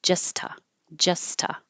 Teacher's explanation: So, there's two T's here, but I'm just going to make one.